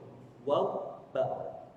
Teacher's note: Waw dan ba butuh dua bibir ketemu baru keluar huruf ini.